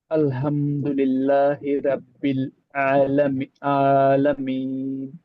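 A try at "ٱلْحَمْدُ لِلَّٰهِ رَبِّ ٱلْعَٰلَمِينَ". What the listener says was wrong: ఇక్కడ కొంచెం బ్రేక్ అవుతున్నారు మీరు. అల్హమ్దులిల్లాహి రబ్బిల్ ఆలమీన్. ఇది ఈ బ్రిడ్జ్ కొంచెం జాగ్రత్తగా మెయింటైన్ చేయాలి. ఆ, హమ్ దగ్గర మీరు బ్రేక్ అవుతున్నారు. అల్హమ్దులిల్లాహి రబ్బిల్ ఆలమీన్. హమ్దు.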